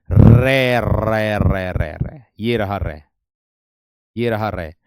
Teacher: लुंठित का जो अर्थ होता है वह होता है मेरे दोस्त जीभ का आगे से मुड़ना। जिस व्यंजन के उच्चारण के समय जीभ की नोक वायु से रगड़ खाकर कांपती है। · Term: लुंठित व्यंजन